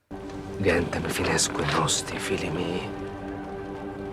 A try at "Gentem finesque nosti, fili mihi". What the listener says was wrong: The E in fines is pronounced too short. He says fines instead of fines. So he says gentem finesque nosti instead of gentem finesque nosti.